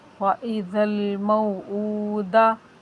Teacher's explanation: دال کے اوپر حرکت غیر مدہ، اس کو بالکل نہیں کھینچنا۔ وَإِذَا الْمَوْءُودَةُ، تا کے اوپر بھی حرکت غیر مدہ، اس کو بھی نہیں کھینچنا۔